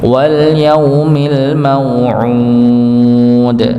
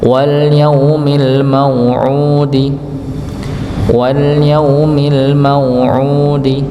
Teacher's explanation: Kalau wau sukun bertemu dengan sukun setelahnya ya sukun arid namanya nggih. Sukun arid maka dia dibaca empat atau enam harakat tadi nggih. Maka dipanjangkan wal yaumil ma'ud ya.